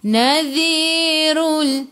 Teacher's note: Ra baca dengan tebal, ra baris depan. Tafkhim. Rul alif lam qamarah, lam ada sukun masuk ke dalam lam.